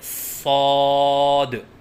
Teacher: الف کی ادائیگی منہ کے کھولنے سے ہوتی ہے، اور 3 الف کے برابر لمبا کر کے پڑھیں، جیسے صاد۔ غلطیوں کی نشاندہی: بعض بچے صاد کی ادائیگی کے وقت منہ بند رکھتے ہیں، یہ غلط ہے، جیسے صاد، کیونکہ الف کی ادائیگی منہ کے کھولنے سے ہوتی ہے، جیسے صاد۔